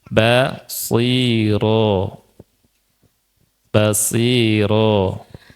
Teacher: ro-nya atau ba-nya dan yang lainnya jangan kemasukan hidung